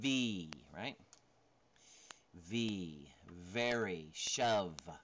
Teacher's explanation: Voiced labial dental fricative labial dental putting them together right and voiced